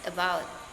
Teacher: the word about may be pronounced as about, where the first vowel is a schwa.